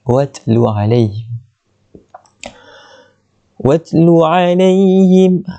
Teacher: bunyikan ta tu bagi keluar angin sikit